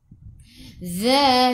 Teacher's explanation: Za di hujung lidah keluar pada gigi depan. Za 2 harakat ada alif kecil mad asli.